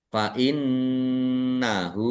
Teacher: nun tasdid dibaca ghunah atau mendengung ditahan biar tampak mendengungnya. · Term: gunnah